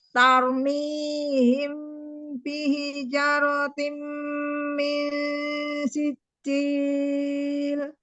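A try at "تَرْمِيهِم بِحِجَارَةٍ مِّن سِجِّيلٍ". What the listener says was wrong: Hanya ada alifnya ya, 2 harokat. Bihijaratim. Hajanya panjang. Ulang.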